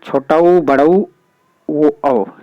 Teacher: जिन स्वरों के उच्चारण में ओष्ठ जो गोल हो जाता है, यानी वृत्त के समान बन जाता है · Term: वृत्तमुखी